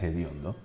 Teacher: conservamos aspectos fonéticos del español que ya han desaparecido, como la aspiración de la H